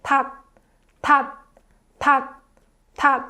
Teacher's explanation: it kind of makes t sound, but not the actual t sound. You have to stop before making that t sound. So you have to say tat, tat, tat, tat.